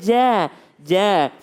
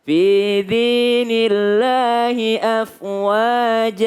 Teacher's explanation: Jadi huruf jim itu tidak berdesis, Bu.